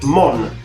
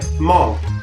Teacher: La prima, quella senza accento, è /ˈmɔn/. La seconda, quella con l'accento, è /ˈmɔŋ/.